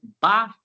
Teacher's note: Para mim dizer bá, o som parou nos meus dois lábios, o de cima e o de baixo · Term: consoante